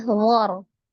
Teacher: Maka sebelum sukun ini ada harokat fathah di huruf dha, maka ro-nya juga dibaca dengan tebal ya